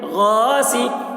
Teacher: سین زیر سی، سین کے نیچے زیر ہے، زیر کو جلدی پڑھیں، تھوڑا بھی نہ کھینچے، معروف پڑھیں، مجہول آواز سے بچیں